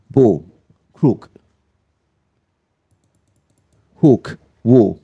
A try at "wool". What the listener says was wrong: Yeah, it wants to be a bit shorter, really. Pretty good, yeah? But a bit short.